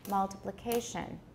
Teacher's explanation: you can tap on the first and the fourth syllables multiplication the fourth syllable seems to have a higher or the same degree of stress multiplication it sounds like it has a higher degree of stress